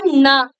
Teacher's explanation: நாவுடைய நுனியானது மேல்வாய் பல்லுடைய அடிப்பகுதி. எக்ஸாக்ட்டா பல்லுடைய அடியை தொட்டு பிறக்கும்